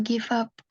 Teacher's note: v-nya nih bunyinya masih F kalau orang Indonesia memang begitu nih bunyi V kalau orang Indonesia sama dengan F